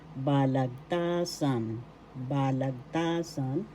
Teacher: First syllable ba, second syllable lag, third syllable ta, fourth syllable san. The third syllable is where the accent is.